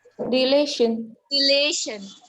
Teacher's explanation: re will be unstressed, lay will be stressed, and shan will be unstressed